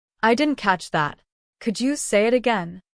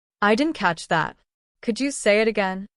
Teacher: Notice how the voice naturally falls at the end of the question. It sounds calm, confident, and polite.